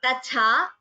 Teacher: the ta is alpa prana, tha is mahaprana